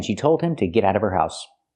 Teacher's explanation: we need the Vv sound in of because we don't pronounce the H in her. We link the sounds.